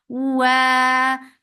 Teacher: makhraj of waw circling lips, make it 2 counts long